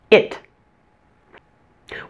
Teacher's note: The short I is a relaxed vowel. Relax your mouth and your tongue as you say it. It doesn't take much effort at all to pronounce this sound.